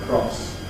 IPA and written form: krɒs (cross)